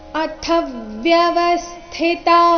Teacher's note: ಅಥ ಮಹಾಪ್ರಾಣ ರಸ್ವ ಅದರ ಮೇಲೆ ಆಘಾತ ಬರಬೇಕು